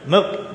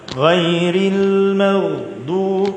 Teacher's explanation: Dia kena Ar-rakhawah, terlepas suara.